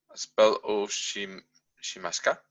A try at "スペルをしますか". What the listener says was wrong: Yeah, good. Can you say the whole sentence one more time?